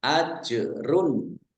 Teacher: Jim sukun bacaan qolqalah dibaca memantul ditampakkan pantulannya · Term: kolkolah